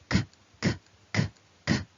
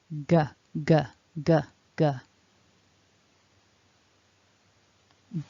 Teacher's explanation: with the k, remember we're breathing out with some air, but we don't want to vibrate the throat.